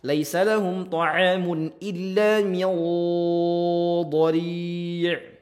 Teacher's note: nun sukun bertemu dengan dhad, ya, ataupun bertemu dengan huruf dhad, ya, sama-sama huruf ikhfa dan juga tebal.